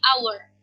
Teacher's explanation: Kenapa sih our itu dikategorikan dengan mempunyai bunyi vokal karena meskipun di sini ejaannya dimulai dengan huruf H, tetapi ketika dipronunciation-kan dia H-nya hilang jadi our. Huruf H-nya tidak dipronounce tetapi langsung kepada O, jadi our.